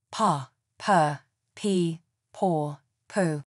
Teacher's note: The five long vowels in RP can be heard in these words